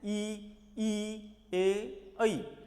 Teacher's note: जिह्वा की आगे की नोक जो है वो नीचे वाले दांतों को हल्का सा पीछे से स्पर्श करती है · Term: अग्र भाग